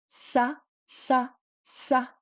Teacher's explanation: But sha, this first one here, sha, first of all, it's high tone and it's at the front of the mouth. Your tongue is very close to your teeth.